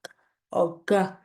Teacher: And then we head to things that are further back in the mouth. So a velar sound might be something like k or g, where you're making the sounds right at the very back of the mouth.